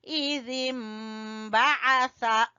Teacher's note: नून की जगह पे हम मीम की आवाज निकालेंगे